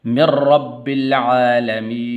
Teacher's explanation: میم کو آگے را کے ساتھ ملانا ہے ، ٹھیک ہے، ایسا نہیں پڑھنا من رب العالمین، نہ، من